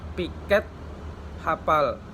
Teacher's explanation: Fonem P bunyi konsonan hambat bilabial tak bersuara